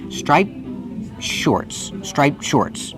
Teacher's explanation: the T is between consonants, so you don't really hear it. It's a stop T.